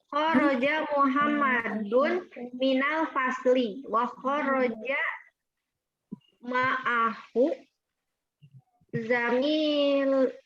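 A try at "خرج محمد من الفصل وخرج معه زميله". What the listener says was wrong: Naam, ahsan.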